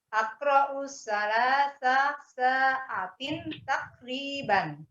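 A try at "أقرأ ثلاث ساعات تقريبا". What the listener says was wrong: Ainnya belum, Bu. Panjangin lagi ainnya. Aqra'u salasa sa'atin takriban.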